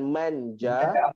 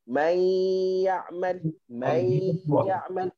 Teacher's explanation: Kalau kita tengok pada manja, masih ada sikit lagi bunyi nun. May ya'mal, bunyi nun dah tak ada. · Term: ikhfa